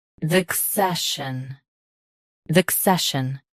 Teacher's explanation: Stress say. Keep shun soft and quick.